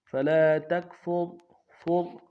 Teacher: فلا تکفر میں تا کو کاف کے ساتھ ملائیں گے، کاف نون سے ادا کریں گے، فا کو را کے ساتھ ملائیں گے، را کو موٹا کریں گے